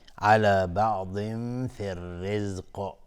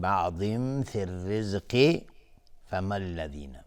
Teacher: اگر ما روی کلمه الرزق توقف بکنیم، قاف قلقله میخواد چون قاف رو ساکن باید بکنیم